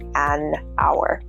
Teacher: Hour has an initial vowel sound and the H sound is omitted, so we say an hour.